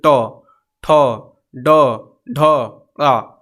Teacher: लेकिन जब ट टमाटर वाला बोलेंगे, ठ बोलेंगे, तो जिह्वा का अग्रभाग, नुकीला जो है जिह्वा का अग्रभाग, वो देखिए जीभ में ऊपर हमारे थोड़ा सा स्पर्श होगा, मूर्धा में स्पर्श होगा। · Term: मूर्धा वर्ग